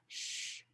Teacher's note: these are segments that have high pitched hissing sound quality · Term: sibilants